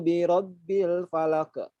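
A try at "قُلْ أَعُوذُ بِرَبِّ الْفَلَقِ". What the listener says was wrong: Jangan falaqa. Falaqa kan. Falaqo.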